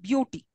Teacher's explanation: beau takes the stress, not the b sound, but beau